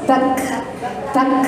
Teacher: Kalau kaf hames, bak, bak, hanya menghembus nafasnya sedikit